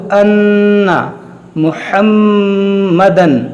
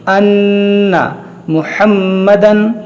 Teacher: मीम में गुन्ना होगा, नून में गुन्ना होगा